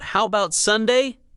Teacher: with a rising tone, like a soft question, not a demand. Your voice should sound open, not rushed, not nervous.